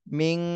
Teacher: নুন সাকিনের পরে ইকফার হরফ ফা এসেছে, এই জন্য এই নুন সাকিনে ইকফা গুন্না করতে হবে। মিং, একদম নাকের মধ্যে নিয়ে গুন্না করতে হবে।